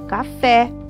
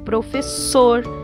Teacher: oxítonas onde a última sílaba é mais forte